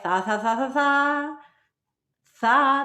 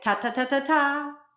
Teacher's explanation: the tongue almost scrapes the teeth and it's more air than tongue